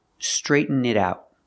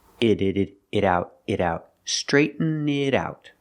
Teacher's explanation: The T in it sounds like a fast D.